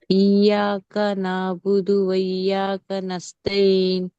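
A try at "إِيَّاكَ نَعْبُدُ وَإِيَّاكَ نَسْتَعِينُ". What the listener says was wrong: యా కింద యావత్తు కొంచెం మంచిగా చదవండి, ఎందుకంటే ఇది మనం స్ట్రెస్ చేస్తున్న ఆయత్, ఇది దీని మీద మనం ఒత్తి పలుకుతున్నాము. ఇయ్యాక ఇయ్యాక నఅబుదు వ ఇయ్యాక నస్తఈన్.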